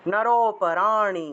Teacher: হ্যাঁ বলেন তো, 22 নম্বর হলো ওয়াসাংসি ওয়াসাংসি জীর্ণানি যথা বিহায়, যথা আছে যথা, যথা বিহায় নবানি গৃহ্ণাতি, গৃহ্ণাতি উচ্চারণ হবে, নবানি গৃহ্ণাতি নরোপরাণি, লুপ্ত ও আছে তাহলে নর থেকে টান দিতে হবে, নরোপরাণি, মূর্ধন্যের উচ্চারণটা হলো জিহ্বা উল্টিয়ে ন উচ্চারণ, পরাণি পরাণি।